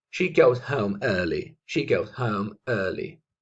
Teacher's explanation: En este caso, conectamos el goes con el home.